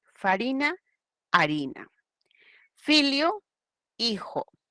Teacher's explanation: la efe que es una labio dental y se dejó de pronunciar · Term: f inicial latina